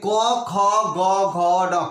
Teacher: दोबारा ध्यान से सुनिए, ये क ख ग घ न, क ख कंठ से आवाज आता है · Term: कंठ वर्ण